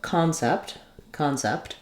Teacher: it does have a clear vowel e but it's going to be shorter in duration